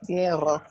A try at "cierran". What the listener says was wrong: Cierran. Plural, ellos, there's always a n sound at the end. Cierran, cierran.